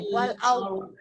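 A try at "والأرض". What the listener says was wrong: Kalau tak jelas bunyi rokhawah, maka dia jadi syiddah. Wal ard. Tu syiddah. Wal ard. Wal ard. Bok tak boleh.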